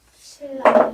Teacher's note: 뒤에 있는 리을 기준으로 앞에 있는 니은이 변했다라고 해서 얘는 역행동화야.